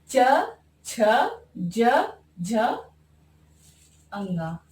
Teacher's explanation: इनका उच्चारण स्थान तालु से होता है।